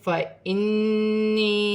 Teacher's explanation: یا ساکن سے پہلے زیر ہے تو یا مدہ بن رہی ہے، ایک الف کی مقدار کھینچ کر پڑھا جائے گا